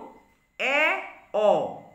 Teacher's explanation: এ, অ, এই দুটি স্বরধ্বনি উচ্চারণের সময় জিহ্বাগ্র মুখবিবরের মধ্যে সর্বনিম্ন যে বিন্দু রয়েছে তার থেকে 2/3 ঊর্ধ্বে অবস্থান করছে, তাই এদেরকে বলছে নিম্ন মধ্য স্বরধ্বনি।